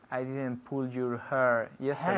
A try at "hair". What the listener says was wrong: Hair, not her. Her is ella. Hair, pelo, hair. Her, ella. Hair. ¿Cómo se dice aire en inglés? Air. Now pone una H. Hair. Okay, so I didn't pull your hair yesterday.